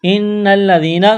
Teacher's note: نون مشدد ہے، آواز ناک میں چھپائیں گے، غنہ کریں گے ، نون کو لام کے ساتھ ملانا ہے، لام میں سختی